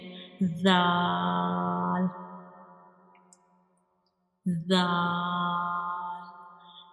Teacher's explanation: When we pronounce Zal, you make sure whistle sound does not come, because this is a soft letter and we read it softly